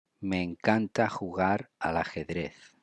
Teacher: We link me and encanta, and then we link al and ajedrez.